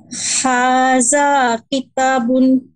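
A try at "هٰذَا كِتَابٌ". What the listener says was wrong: কিতাতে একটু, তাতে, হ্যাঁ, তাতে একটু মাদ হবে। হ্যাঁ, তাবুন।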